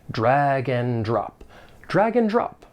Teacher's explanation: the conjunction and is often reduced in spoken English and it's just going to sound like n and then we can link the final consonant sound in drag · we can link the final consonant sound in drag with that beginning vowel sound